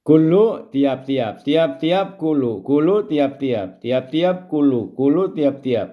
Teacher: Apakah ketika mengucapkan kaf itu keluar udara enggak? Nah, kalau keluar udara itu benar. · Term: hamz